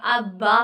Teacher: बा दोनों होठों से अदा होता है। तो इसका मखरिज भी यही है कि बा दोनों होठों से अदा होता है।